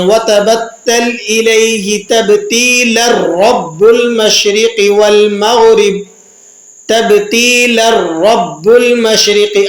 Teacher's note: را پر تشدید موجود نہیں ہے لیکن آپ جب ملا کر پڑھ رہے ہیں تو آپ یہاں تشدید ادا کر رہے ہیں